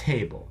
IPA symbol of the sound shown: tʰ